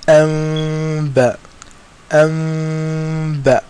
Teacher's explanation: And also, in this particular ikhfa, the lips are brought very close, but they don't touch. They leave a slight little gap And the ulama of Tajweed say it's as if you're holding a seed between your lips.